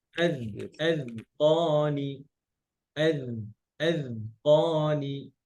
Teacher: আযকানি জালে কিন্তু রখাওয়া আছে, হ্যাঁ, আওয়াজ জারি থাকবে